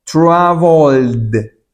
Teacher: Pronuncio con una D porque esto es una consonante que suena.